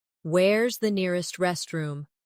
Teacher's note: In fast speech, where is sounds like where's.